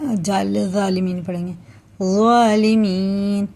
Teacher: जाल और ज़ोए का एक ही मखरज है, जाल और ज़ोए का, लेकिन जाल बारीक होता है, ज़ोए पुर होता है।